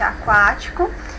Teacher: Eles estão em uma sílaba só. Nós temos aqui um ditongo oral que é crescente. Nós vamos da semivogal para a vogal